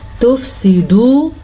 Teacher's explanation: یہاں پہ واو مدہ ہے، واو ساکن سے پہلے پیش ہے تو اس کو ہم کھینچ کے پڑھیں گے